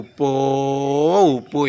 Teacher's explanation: அந்த உயிரெழுத்து ஒரு மாத்திரை அளவிலிருந்து மிக நீண்டு ஒலிக்கிறது